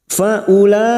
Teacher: mad wajib muttasil lima harakat kita panjangkan